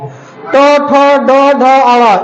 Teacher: ट ठ ड ढ अड़ इनका उच्चारण मुर्धा से होता है एम का मतलब मुर्धा तो इनका उच्चारण किससे होगा मुर्धा से · ट, ठ, ड, ढ, अ, इनका उच्चारण मूर्धा से होता है।